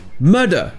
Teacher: murder, un meurtre, se prononçait murder, avec les R complètement muets. Ça, c'est un exemple d'accent non-rhotic.